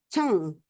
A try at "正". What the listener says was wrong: Oh, cengnya bersih. Ya, cuma lidahnya kalau bisa dilatih diangkat. Ceng, jadi lidahnya digulung. Tapi kalau belum bisa nggak apa-apa ya. Tapi nadanya udah oke ya.